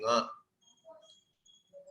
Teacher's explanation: There the effort comes from your throat, but then you leave the air through your nose rather than the mouth. So the Ka becomes Nga when it goes through the nose.